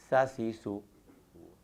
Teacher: ज़ुबान की नोक जब सामने के ऊपर और नीचे वाले दांतों के दरमियान में रहे और ज़रा सा ज़ुबान का हिस्सा नीचे वाले सामने के दो दांतों के किनारे से टकराए तो सीन अदा होता है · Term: असलिया